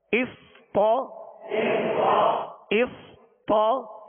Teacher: صاد ساکن ہے، سکون ہلنے نہ پائے، اس، طا زبر طا، طا کی زبر دراز نہ ہو، بغیر کھینچے بغیر جھٹکا دیے آواز اور منہ کھول کر پڑھیں گے